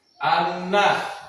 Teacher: Kedua, guna karena nun bertasdid, cara bacanya dengung dan ditahan